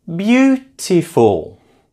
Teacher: Beautiful is stressed on the first syllable.